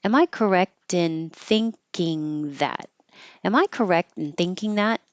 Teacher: because you're asking yes no it's going to go up